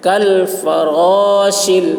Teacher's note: شین کی آواز سیٹی کے جیسی